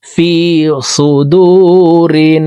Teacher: রিন ওয়াজিব গুন্নাহ, 3 সেকেন্ড পরিমাণ গুন্নাহ করে পড়ব।